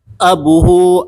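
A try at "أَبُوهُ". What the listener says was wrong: Panjang apa pendek? Panjang. Jadi kalau abun itu harus panjang ya. Kalau bergandengan dengan huruf jar, domir, yaitu domir huwa, domir apapun, dia nggak boleh abuhu, nggak boleh. Harus panjang. Jadi abuhu ada wawunya. Maka hu-nya pendek no.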